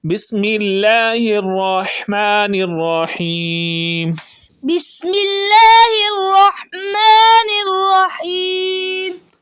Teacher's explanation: الرحمن یہ جو ہا ہے حلق کے درمیان والے حصے سے ادا ہوتی ہے